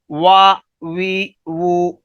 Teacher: لیکن واو کی ادائیگی ذرا مختلف ہے کہ واو کو ادا کرتے ہوئے دونوں ہونٹ آپس میں چپکیں گے نہیں، بلکہ گولائی کی شکل میں یہ دونوں ہونٹ گول ہوں گے اور ان کو جو کنارے ہیں دونوں طرف سے وہ آپس میں تھوڑے سے ملیں گے، وہ گولائی کی شکل میں ادا ہوگا، دونوں ہونٹ گولائی کی شکل میں ہوں گے تو حرف واو ادا ہوگا۔